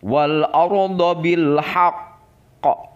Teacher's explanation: Di atas huruf qaf ada tanda tasdid, ditekan 2 harokat kemudian memantul. Dan ini termasuk kepada qalqalah kubro atau biasa juga disebut qalqalah akbar.